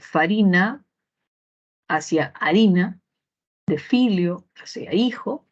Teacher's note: la f cambia hacia la H que no tiene sonido o manifestación fónica